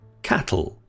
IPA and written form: ˈkæt.l̩ (cattle)